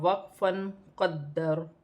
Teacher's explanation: وقف کی صورت میں زبر گر جائے گی اور را ساکن ہو جائے گی۔